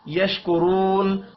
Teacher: را کے اوپر پیش ہے، را کو پر پڑھنا ہے، واو مدہ کو ایک الف کے برابر کھینچ کر پڑھیں گے.